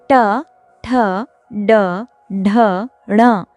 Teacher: स्पर्श व्यंजनों के ट वर्ग के वर्ण हैं। यह सभी व्यंजन मूर्धन्य कहलाते हैं क्योंकि इनका उच्चारण जीभ को उलटकर मूर्धा यानी मुख के ऊपरी छत का मध्य भाग से स्पर्श करके होता है।